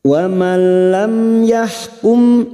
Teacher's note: mim sukun bertemu ya, idhar syafawi, mim sukun dibaca jelas tanpa mendengung. Wamalam yahkum, yah huruf ha, yahkum, mim sukun bertemu ba, mim sukun bertemu ba, namanya bacaan ikhfa syafawi, mim sukun mendengung selama 2 atau 3 harokat.